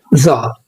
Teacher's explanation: بيكون في اهتزاز في الأحبال الصوتية زي حرف الدال عندنا في اللغة العربية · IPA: /ð/